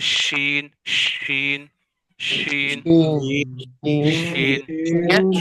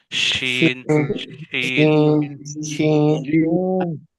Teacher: شین، تو آپ دیکھ رہے ہیں کہ یہاں پر جو ہے وہ زبان جو ہے وہ ہماری جو ہے وہ کہیں بھی نہیں لگ رہی ہوتی، یعنی زبان کا درمیان جو ہے وہ اوپر تالو کے درمیان سے یہ آواز جو ہے پوری منہ میں پھیل رہی ہوتی ہے